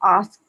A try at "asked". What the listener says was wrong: So you are stressing a little more on the ed.